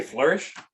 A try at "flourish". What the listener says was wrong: Flourish. No, it's not like home. It's flourish.